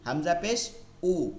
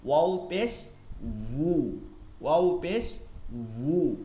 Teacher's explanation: তো আপনারা অনেকে ভুল করেন যেটা, সেটা হচ্ছে ওয়াও পেশ উ থেকে, মানে হামজার উচ্চারণ থেকে আপনারা করার চেষ্টা করেন। দেখেন হামজা হয় হচ্ছে হলক, যে গলা এর নিচ থেকে হয়, আর ওয়ার উচ্চারণ হয় দুই ঠোঁট থেকে।